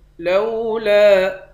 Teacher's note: لام کے بعد الف ہے، اس الف پر مد ہے، اس مد کو تین الف کے مقدار کھینچ کر پڑھیں گے